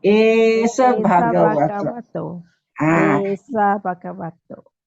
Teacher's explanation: because the esa is short, the SA is short, so we tend to join it.